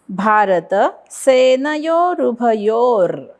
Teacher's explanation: यो वरती आघात, कारण पुढे जोडाक्षर